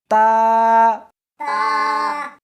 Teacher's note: اس حرف کو زبان کے اوپر کے تالو سے ملا کر پڑھیں گے